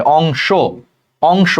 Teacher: যেমন অংশ, দেখো শব্দের লাস্টে স, তালব্য স্বর সাথে কিন্তু একটা অ আছে, উচ্চারণ চিন্তা করো, তালব্য স যোগ অ, অংশ, তাহলে লাস্টে কিন্তু একটা অ আছে, তাহলে এইটাকেই বলে অন্ত অ। তাহলে দেখো সেই অন্ত অর আগে অনুস্বার আছে, তাহলে এই অন্ত অটা ওকারের মতো উচ্চারণ হবে